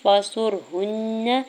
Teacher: ہا کی پیش کو نون شدت کے ساتھ ملاتے ہوئے غنہ کرنا